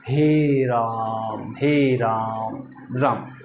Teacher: तो राम यहाँ देखिए अ लंबा खींचा जाता है, यानी अ को लंबा खींचा जाता है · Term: प्लुत स्वर